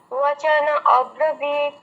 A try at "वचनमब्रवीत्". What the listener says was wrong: अब्रवीत नहीं, वचनमब्रवीत। म मब्रवीत।